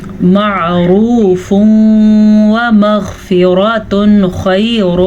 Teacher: غین کے مخرج کو پر پڑھنا ہے، اس کے ساتھ ساتھ را کو پر پڑھنا ہے کیونکہ را پہ زبر ہے